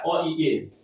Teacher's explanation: तो कंठ इसका अ और इ दोनों के मेल से बना है। इसलिए अ का उच्चारण कंठ से। इ का उच्चारण तालु से